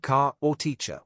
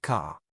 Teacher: Americans usually pronounce the R strongly at the end of words